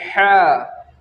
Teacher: ہا کو ہم حلق کے بیچ کے حصے سے ادا کرتے ہیں مخرج کے ساتھ۔